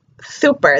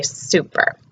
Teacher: the tongue should be coming behind the teeth, and the S should be clearer. And so instead of saying super, they should start to say super.